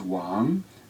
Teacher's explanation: the second most common name in China is Wang said with a rising second tone